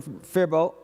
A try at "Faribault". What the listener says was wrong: That's pronounced Faribault. The L and T are silent, but I tried to prep you for that, but you weren't going to listen to me, were you?